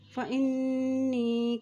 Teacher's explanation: نون کے اوپر شد ہونے کی وجہ سے یہاں پہ غنہ بھی ادا کیا جائے گا